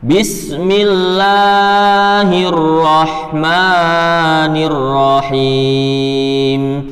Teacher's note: membaca mat asli kepanjangan yang seharusnya hanya 2 harokat atau 2 ketukan, tapi dibaca menjadi 3 harokat